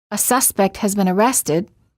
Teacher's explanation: As a general rule, the last content word of a phrase gets the most stress. So, in the sentence, a suspect has been arrested, arrested will get the most stress